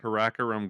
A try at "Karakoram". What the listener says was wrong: We're putting the emphasis on the wrong syllable here.